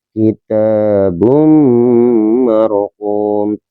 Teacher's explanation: dibacanya dengan cara memasukkan tapi jangan mendengung dinamakan idgham bihunah